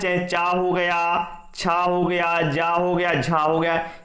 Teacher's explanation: जो चा वर्ग होता है, चाहे चा हो गया, छा हो गया, जा हो गया, झा हो गया, ये सभी क्या है तालु के अंतर्गत आते हैं